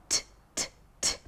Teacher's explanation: the tip of the tongue goes up and the air is released through the mouth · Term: T sound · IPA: /t/